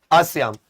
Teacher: विवृत मतलब जिसके उच्चारण में आपका मुंह पूरा खुल जाए